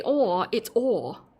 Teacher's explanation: There's no R. Australians typically do not put the hard R or the rhotic R on the end of words.